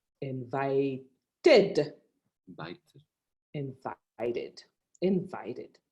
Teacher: d sounds like a two and in the case of invite because the last sound is a t sound the e d is pronounced like an id